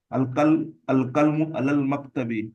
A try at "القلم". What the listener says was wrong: القلم، قلم نہیں، القلم زبر کے ساتھ۔